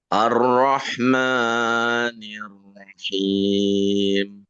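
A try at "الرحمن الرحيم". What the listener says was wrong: Ya, di kalimat Ar-Rahman, maknya itu matnya, mat, man, itu terlalu panjang tadi. Coba dikurangi lagi sedikit, 2 harakat saja.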